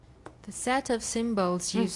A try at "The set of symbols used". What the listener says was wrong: Set, not sat. Set.